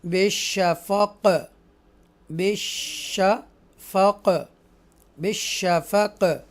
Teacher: اور اگر ہم وقف کریں گے تو یہ حروف قلقلہ میں سے ہو جائے گا, تو پھر ایکو ساؤنڈ کے ساتھ جنبش کے ساتھ ادا کریں گے.